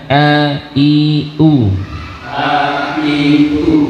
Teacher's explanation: Huruf ain ya, dia ada di pertengahan tadi, pertengahan tenggorokan ya. Dan huruf hamzah maka ada di bawah ya, ada di bagian bawah tenggorokan ya.